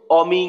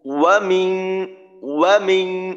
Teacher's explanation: একেবারে ঠোঁট গোল করে তারপর ওয়াও উচ্চারণ করতে হয়